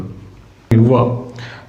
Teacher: व मध्ये काय दंत प्लस ओठ, या दोन्ही गोष्टी लागतात त्याला दंतोष्ट